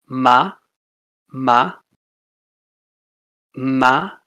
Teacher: that's bilabial. So your two lips together, ma. Then we have dentolabial, so your bottom lip on your top teeth, ma, ma.